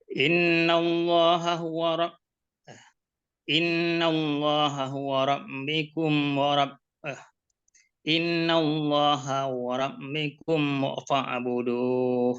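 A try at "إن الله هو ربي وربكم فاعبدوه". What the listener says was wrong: Rabbi dulu Pak, dibaca innallaha huwa rabbi wa rabbukum fa'buduh.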